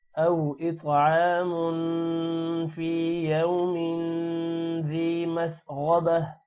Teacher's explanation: غین موٹا ہوگا اور تا جو ہے وہ ہا میں کنورٹ ہو جائے گا وقف کی وجہ سے · او واو کی وجہ سے حمزہ جب واو کے ساتھ ملے گا تھوڑا سا لمبا ہوگا. اطعام تو پر قلقلہ ہوگا اور تو موٹا بھی ہوگا. عین پر کھڑی زبر ہے تھوڑا سا لمبا ہوگا.